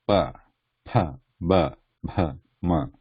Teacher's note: the last line is labial means the lips they closed and then open